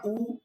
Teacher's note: होठों का आकार यहां पे गोल हो जाएगा। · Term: वृत्ताकार